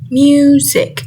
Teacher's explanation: the first syllable which is mu has stress in it